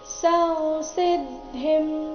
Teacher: ಸ ನಂತರ ಇರೋ ಅನುಸ್ವಾರದ ಉಚ್ಚಾರಣೆ ಅನುನಾಸಿಕ ಮ ರೀತಿ ಬರಬೇಕು